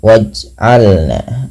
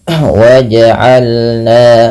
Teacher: pantulkan bunyi suara pada lafal huruf jim yang berharokat sukun. Apabila ada huruf dia berharokat sukun, tandanya seperti ini. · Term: memantul